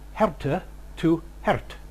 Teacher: the loss of the final unstressed vowel, which led to the pronunciation of herte to hert